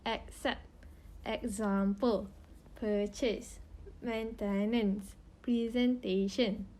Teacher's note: Singlish speakers usually do not practice unstressed vowels like received pronunciation speakers does, and they lean towards using the full vowels